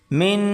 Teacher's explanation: یہاں پر غنہ کرنا ہے، میم نون زیر من، ناک میں آواز گنگنائیں